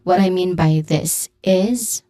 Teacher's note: is has a buzzing sound at the end.